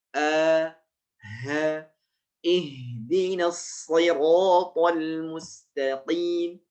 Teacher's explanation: Ihdi ha dari pangkal tenggorokan. Huruf ha dan hamzah itu sama dari pangkal tenggorokan.